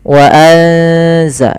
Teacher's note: Suara nunnya disamarkan ke zai. Wa anza, sambil ditahan bacaan eng-nya atau bacaan gunnah ikhfa, ya, dengungannya.